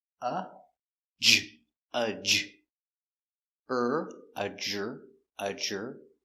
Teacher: Remember, d r together make the sound j